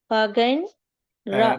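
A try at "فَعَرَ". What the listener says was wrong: మధ్యలో ఉన్నది ఐన్.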